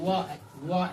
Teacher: एक वर्ण वो ऐसा है, एक वर्ण व ऐसा है जिसमें दंतोष्ठ दिया जाता है। इसमें व का उच्चारण जो है दंत और ओष्ठ के माध्यम से भी होता है